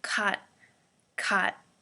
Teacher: When we speak very quickly, we take the T out, so it's just caught, caught.